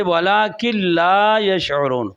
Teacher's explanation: तो नून लाम में दाखिल हो रहा है, तो इसलिए यहाँ पर भी इदगाम हो रहा है।